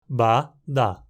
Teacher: É interessante também que em a as versões vozeadas são implosivas